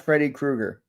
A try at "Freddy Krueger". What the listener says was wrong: You missed the R in Krueger.